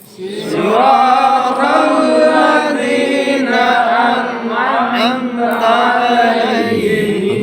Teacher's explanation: Di sana mematikan atau mensukunkan nun an. Jangan am.